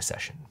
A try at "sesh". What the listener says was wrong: No, it's like session, but you save a syllable. Sesh.